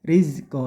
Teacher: ro tarkik atau ro tipis bunyikan eh meringis atau tipis saja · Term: rok tarkik